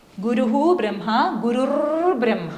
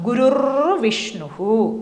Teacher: ഈ വിസർഗം ഇർ ആയി മാറുന്നു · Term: ബഹി സന്ധിഹി